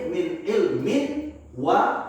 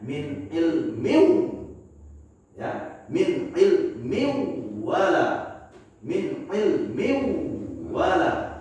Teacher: Berarti kita harus lebur bunyi in-nya, bunyi n-nya kita lebur ke huruf wa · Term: Idgham